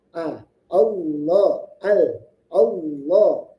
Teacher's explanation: diperjelas huruf hamzahnya ketika dia fathah.